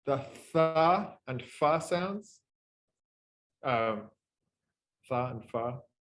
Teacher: these are relatively low frequency fricatives in the sense that they're the noise, the energy from the noise is relatively low in the spectrogram